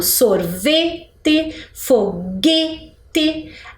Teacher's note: elas têm a mesma sonoridade, a pronúncia mais forte ali naquela sílaba do meio